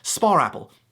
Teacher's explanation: Ask a British person to pronounce the word spa before the word apple. There's no R in either of those words, but they will end up saying spar apple.